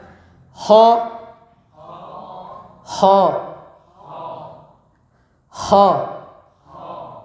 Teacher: Bedanya ho itu ada hamsnya. Jadi ada nafasnya. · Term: huruf kha